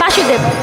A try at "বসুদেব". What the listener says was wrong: এটা মানে কাছাকাছি গেছে কিন্তু উচ্চারণটা ভুল হয়েছে। বাসুদেব হবে না, বসুদেব হবে।